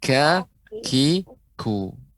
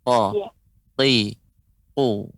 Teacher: Bedanya huruf kaf dia mengeluarkan udara ya. Huruf qaf tidak.